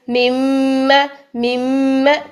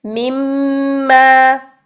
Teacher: ہونٹوں میں بھی وائبریشن ہو رہی ہوتی ہے اور ناک میں بھی وائبریشن ہو رہی ہوتی ہے، گنگنی سی آواز ہو رہی ہوتی ہے۔ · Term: غنہ